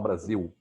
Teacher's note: o fato de a gente trocar o O pelo U, o L pelo U, por exemplo, você não fala Brasil, você fala Brasil.